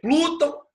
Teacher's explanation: O tão é oxítono, porque o tão é mais forte.